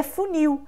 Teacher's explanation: E funil termina com L. Então, nesse caso, você tem o metaplasma aí por transformação, vocalização, de L para U.